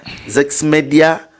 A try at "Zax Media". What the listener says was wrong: N'erinnya liri Zax, not Zex.